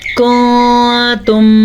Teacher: کنتم، نون ساکن کے بعد حروف اخفا میں سے تا آیا ہوا ہے تو ہم کیا کریں گے؟ نون ساکن کی آواز کو چھپا کے پڑھیں گے